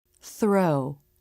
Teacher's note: clamping down on it the lips and face are relaxed throw notice how the lips are starting to flare for the r as the tongue comes through the teeth · Notice how it's just the very tip that comes out of the teeth. The tongue is relaxed. The teeth surround it, but they're not clamping down on it. The lips and face are relaxed. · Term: unvoiced TH